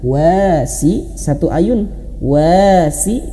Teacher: Tapi di metode Iqra wa Abah di sini dihadirkan warna kelabu, berarti tidak dibaca, langsung masuk ke huruf lam. Min syarril waswasi, wa-nya panjang 2 harokat.